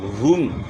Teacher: یجعل کیدہم، یہاں بھی یائلین ہے، یا ساکن سے پہلے زبر ہے، نرمی سے ادا کریں گے۔ ہم ہا کی پیش کو معروف پڑھنا ہے، مجہول نہیں پڑھنا، پیش میں ہونٹ گول ہوں گے